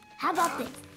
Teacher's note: phrase when we make a suggestion notice the connected speech here the first and the last letters in the word about are dropped and we link it all together